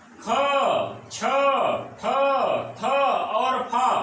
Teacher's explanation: इसी प्रकार तालिका का दूसरा खंड, तालिका का दूसरा खंड, ठीक है मित्रों, तालिका का दूसरा खंड अर्थात तालिका के दूसरे खंड में आने वाले सभी वर्ण ख, छ, ठ, थ और फ ये अघोष और महाप्राण दोनों होंगे